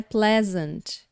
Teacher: A ênfase, a sílaba tônica tá no comecinho da palavra.